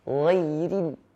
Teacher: Yang pertama, ghairil maghdub. Huruf ra di situ berharakat kasrah. Ghairil tipis ya.